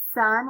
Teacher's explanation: It has the unvoiced, like sun, where you don't hear any vibrations.